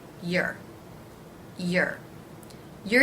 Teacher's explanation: begins with the Y consonant sound then the schwa and finally the R consonant sound